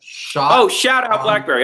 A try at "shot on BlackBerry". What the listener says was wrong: Okay, yeah, not shout on, shot on.